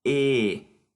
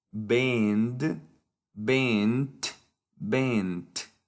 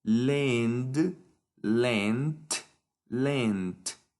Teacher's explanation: En el presente, en el pasado y en el participio pasado es el mismo sonido, que es una E abierta.